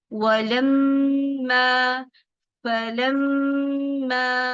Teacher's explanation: Okay, अब हम देखते हैं यहाँ पे कि जो मीम मुशद्दद है या नून मुशद्दद है, उस पे तो आपके पास पहले ही आपको क्या याद करना है, आपने ये बात याद करनी है कि नून मुशद्दद हो या मीम मुशद्दद हो, दोनों पे क्या करते हैं, 2 काउंट्स गुन्ना करते हैं। ठीक है, यानी अगर आप ये पढ़ना चाहते हैं वलम्मा, बजाय इसके कि वलम्मा, हमने झटका नहीं देना, हमने क्या करना, गुन्ना करना। · हमने झटका नहीं देना, हमने क्या करना, गुन्ना करना। कितनी देर तक, 2 काउंट्स तक